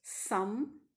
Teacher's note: the soft palate is lowered so that the nasal passage of air is opened the lung air escapes through the nostrils freely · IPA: m